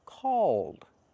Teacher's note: You tighten the muscles in your tongue to make the dark L.